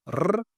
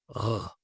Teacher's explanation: Ce R qu'on fait avec la luette · Oui, oui, celui qu'on utilise aujourd'hui, celui qui vous paraît impossible à prononcer. Donc, pour comparer, il y a le R roulé, R, et le R uvulaire